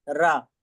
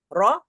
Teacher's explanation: तो रॉ दोनों तरीके से पढ़ा जाता है, पुर और बारीक दोनों